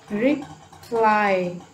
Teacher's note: Reply, okay, here again I is a diphthong, so the second syllable is stressed.